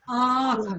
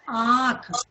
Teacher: अनुनासिक यानी जिसको हम बोलते हैं उच्चारण करते समय नाक से हवा निकल रही है ना।